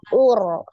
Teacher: ro sukun sebelumnya dhomah ur itu juga dibaca dengan tebal